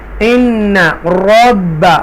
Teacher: دونوں نون مشدہ با مشدہ یہاں پریس کر کے دبا کر آپ پڑھیں گے کیونکہ یہ دونوں لفظ ٹوائس ٹائم پڑھے جاتے ہیں, 2 مرتبہ پڑھے جاتے ہیں.